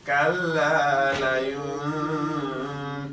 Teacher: So here, the way we read it is Kalla la yun. So I say the noon goes into, changes into a meme. And then I have a ghunna. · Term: al-iqlab